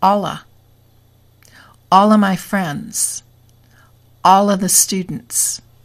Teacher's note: L followed by a. The L moves to the a and we get alla.